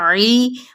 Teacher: عی مد اصلی بالیا، عین کو وسط خلق سے ادا کرنا ہے